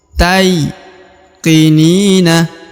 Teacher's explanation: huruf ta diayun sekali dengan lembut karena di depannya terdapat ya yang berharakat sukun